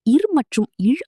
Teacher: இர் மற்றும் இழ் ஆகிய எழுத்துகள் மேல்வாயை நாக்கின் நுனி வருடுவதால் பிறக்கின்றன